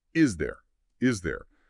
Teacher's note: there's often a slight Z sound linking them. It flows like is there. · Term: Zlink